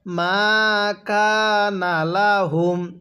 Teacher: এখানে কাফের মধ্যে টান হবে, নুনের মধ্যে টান হবে না